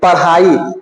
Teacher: इसके उच्चारण के लिए जीभ को मोड़ करके हवा बाहर छोड़ना रहता है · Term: द्विगुण व्यंजन